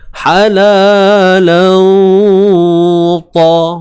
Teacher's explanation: ikhfa hakiki ni tuan-puan, dia kena dengung dengan kadar 2 harakat